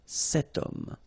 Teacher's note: H is not pronounced, okay? So you've got the sound of O at the beginning of this word